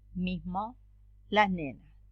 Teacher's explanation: She also explains that there are special cases in which before nasal consonants, bilabial and alveolar, what we pronounce in the place where the letter S appears is a devoiced nasal in the same point of articulation as the nasal that follows, bilabial or alveolar.